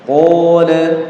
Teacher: Qolanya itu qafnya cuma 2 harakat